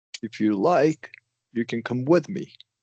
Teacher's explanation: So, do you want to go up in pitch for those natural pauses as kind of like a demarcation and a clear signal to your listener Right. that you're not done.